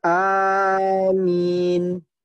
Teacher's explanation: Yang paling pertama dan ini yang paling fasih yaitu dengan memanjangkan alif dan meringankan mim. Yani dibaca amin ya.